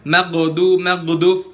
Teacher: Yang pertama dan yang paling sering dan paling langganan semua orang kesalahan pas baca huruf gha, yaitu ghain yang sukun dibacanya memantul atau qalqalah. Nah, biasanya nih orang-orang yang baca ghain itu bacanya mantul pas sukun, maghdu, itu kesalahan dia pasti sepaket.